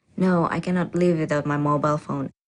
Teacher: in response to the first question the answer is definite and this certainty is expressed with a flat or level tone